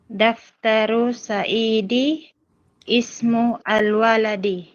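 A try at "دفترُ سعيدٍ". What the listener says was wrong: Bakit binasa mo siya ng Saidi at hindi Saidin? Saidin.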